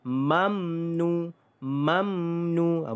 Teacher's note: izhar syafawi bacaan kita jelas tanpa dengung